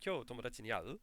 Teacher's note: It's not constantly rising throughout the entire sentence. It's just the last syllable, る, where we actually rise. · And we just rise at the end.